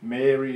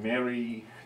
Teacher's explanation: Mary, the name, is long, Mary, to be happy, is short.